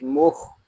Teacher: خا حلق کے اوپر والے حصے سے ادا ہوتا ہے